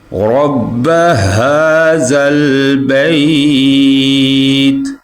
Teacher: اور یہ جو را ہے اس کو ہم پر پڑھیں گے، رَبَّ هَذَا الْبَيْتِ، رَبَّ، را کو پر پڑھیں گے، یہ ہا جو ہے یہ نیچے والے حلق سے ادا ہوگا